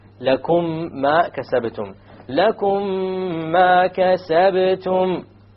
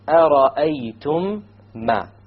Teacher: You have once again the meme sakin followed by a meme. You merge it together and you have a ghunna. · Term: idgham shafawi